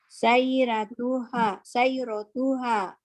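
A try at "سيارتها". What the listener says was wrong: Sayyaratuha. H-nya panjang.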